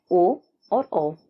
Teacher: कंठम वर्ण उन वर्णों को कहा जाता है जिनका उच्चारण स्थान कंठ और होठ होता है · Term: कंठोष्ठम वर्ण